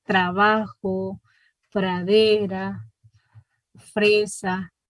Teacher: Es un sonido, es aproximante precisamente porque es más relajado, ¿verdad? O sea, no se escucha ni percusiva ni vibrante, entonces utilizamos el sonido aproximante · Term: aproximante alveolar sonora